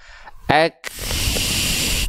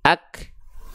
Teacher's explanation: Nah, jadi yang harusnya tadi hams itu adalah nafasnya mengalir, tapi dia hanya berupa percikan nafas karena impact dari sifat syiddah yang menyertainya, yaitu tertahan suara. Nah, maka ketika kita melafalkan huruf kaf kan dia nggak dibaca mengalir nafas dan suaranya.